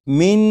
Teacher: بسم اللہ الرحمن الرحیم۔ من 3 مرتبہ میں نے پڑھا اور اس طرح پڑھا کہ زبان تالو سے لگا کر پڑھا۔ اب آپ بھی پڑھیے گا 4 مرتبہ زبان تالو سے لگا کر۔